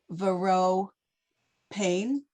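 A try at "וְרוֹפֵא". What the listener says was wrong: It's not a pay. There's no dot in the middle.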